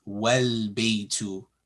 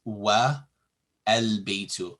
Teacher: Al-baytu, here A is pronounced, but if it is preceded by a wow, meaning and, the A is also dropped, and the phrase is pronounced wal-baytu, not wa al-baytu.